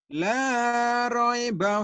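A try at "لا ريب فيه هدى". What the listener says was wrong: Roy, Roy. Jangan Roy. La Roy. La raiba fihi hudan.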